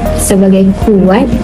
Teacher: bunyi konsonan K yang diikuti oleh vokal belakang U menyebabkan berlaku sedikit pembundaran bibir akibat pengaruh vokal U. Lambang pembibiran atau labialisasi ditandakan dengan simbol W.